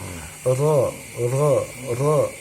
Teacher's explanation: Dia disamarkan ro-nya, jangan dijelaskan r, ya, tapi ro, ya. Dia digesekkan tapi agak lembut. Ro, ya. Jadi jangan terlalu ro. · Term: huruf ro